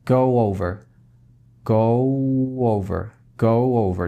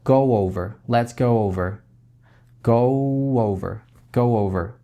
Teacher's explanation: Напомню, что когда у вас на стыке два гласных звука, в частности, рассматриваем случай, когда у вас звук О или У, то есть это заднего, звуки, которые в задней части ротовой полости происходят. Если у вас фраза, например, go over, мы ее соединяем вместе через небольшой звук W. То есть не чистый звук W, go over, быть такого не будет, потому что это будет неестественно и трудно произносить.